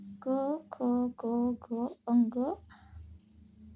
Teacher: क वर्ग व्यंजन है क, ख, ग, घ अंग कंठ के स्पर्श से कंठय।